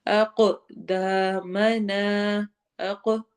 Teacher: قاف پہ اگین قلقلہ ہوگا، ایکو ساؤنڈ ہوگی، آواز کو ملائیں گے۔ اقدا لمبا ہوگا، دو حرکہ، الف مدہ ہو رہی ہے۔